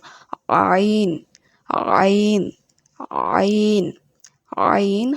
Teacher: আইন, আইন, আইন, আইন হলকের মাঝ হতে গলা চেপে বলতে হবে।